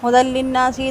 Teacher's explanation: ہدی للناس، دال کی تنوین کے بعد لام ہے، ادغام بلا غنہ ہوگا، نون مشدد اکمل غنہ ہوگا